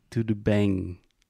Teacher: in Portuguese, you have nasal vowels, so when you have a word that ends with an M, you do not close your mouth completely. So you say something like tudo bem, but you don't say bang, right?